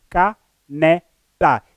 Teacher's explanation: E a sílaba tônica é a segunda, neste caso a penúltima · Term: paroxítona